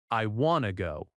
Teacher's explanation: The T in want often softens when it connects to to. · I want to go. In fast American speech, it becomes I wanna go.